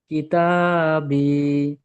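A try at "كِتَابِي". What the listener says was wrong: হলো না তিনটা একসঙ্গে বানান করেছেন কেটে কেটে করেন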